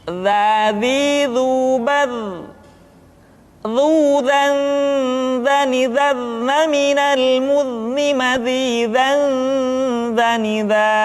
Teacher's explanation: diucapkan dengan menyentuhkan ujung lidah dengan dinding dua gigi seri bagian atas seperti kita mengucapkan huruf tha. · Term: huruf dza